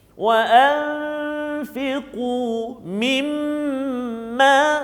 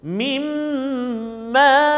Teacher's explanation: Tengok, dengung. Masukkan bunyi nun mati ke dalam mim berserta dengan dengung. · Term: idgham ma'al gunnah